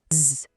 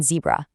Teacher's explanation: Z is a continuous buzz